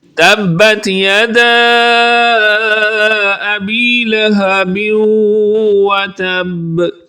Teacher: تبت یدا کو لمبا کریں گے، یہاں پر مد منفصل ہے